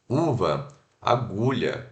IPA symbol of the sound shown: u